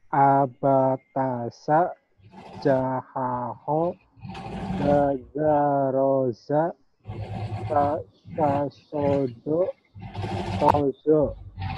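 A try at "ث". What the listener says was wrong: kayaknya di sinnya yang kurang ini ya sin titiknya ya sin titiknya yang lainnya udah kena Sasha ya nggak apa-apa proses ya, ya semuanya.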